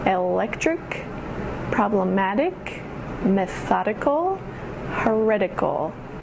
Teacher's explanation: The emphasis goes on the syllable right before the ick or ical ending.